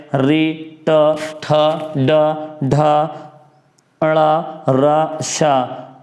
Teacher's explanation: इनका जो माध्यम है, माध्यम उच्चारण का मूर्धा और जीभ है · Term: मूर्धन्य